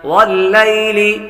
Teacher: یا حروف لین میں سے ہے اس لیے اس کو لمبا نہیں کریں گے